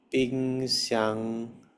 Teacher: with the second syllable stressed and lasting longer